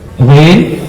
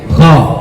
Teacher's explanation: Kalau kita bandingkan Bapak Ibu sekalian, kha dan gha itu antara lembut dan kasar aja bedanya. Ghain itu lebih lunak dia, kha lebih gorgoroh dia.